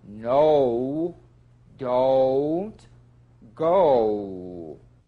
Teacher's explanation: a diphthong that's two sounds blended into one o beginning with the number two position but continuing into the smallest lip opening